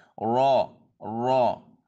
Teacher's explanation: ٹھیک ہے، اس کو زبان کو اوپر کی طرف لے کے جانا ہے، منہ تھوڑا سا گول ہوگا تو یہ رو ادا ہو جائے گا. یعنی زبان کی نوک اور مقابل کے تالو سے ادا ہوتا ہے